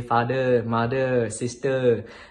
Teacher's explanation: we don't really have THs in our English, so we don't say father, mother, we say father, mother, sister.